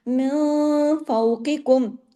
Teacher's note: نون ساکن کے بعد فا اخفا ہوا، لیکن بڑا غنہ نہیں ہوا، چھوٹا غنہ ہوا، کون سا، کاملہ.